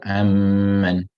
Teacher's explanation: You leave out the first one, go straight into the second one with a shadda, and because of that, the shadda will cause the meme now to be pronounced with ghunna